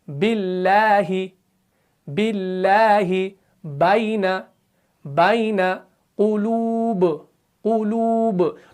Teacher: تو با کو پڑھتے وقت کیا ہو رہا ہے کہ ہونٹ مل رہے ہیں، زبان کا بیچ والا حصہ اوپر تالوں سے نہیں مل رہا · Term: حروف منفتحہ